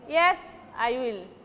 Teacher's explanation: beginning word, yes, you will say by giving stress. Yes, then when you will say I will, that time your voice will fall. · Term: intonation